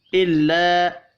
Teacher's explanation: الف کے اوپر چھوٹی مد ہے، تین الف کے برابر کھینچ کر پڑھنا ہے